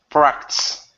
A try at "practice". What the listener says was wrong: Okay, so you need to pronounce that that vowel sound. So right now you're saying practice, and only an S. Practice. So it needs to be practice. Practice.